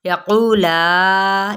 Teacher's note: مد اصلی بالواو اور 4 حرکات کے برابر لا اس کو کھینچیں گے